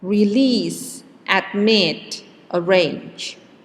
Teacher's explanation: example center object and flower okay if they are verbs and the stress then is on the last syllable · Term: word stress